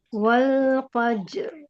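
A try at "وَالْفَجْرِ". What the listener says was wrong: Jelaskan R-nya. Jelaskan R-nya. Jelaskan R-nya. Tebalkan.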